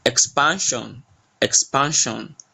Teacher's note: So the pan is more stressed.